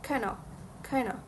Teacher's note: The original phrase kind of contains the consonant cluster n followed by the preposition of in natural rapid speech. Both the duh and V sounds were omitted resulting in cano cana. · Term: consonant cluster reductions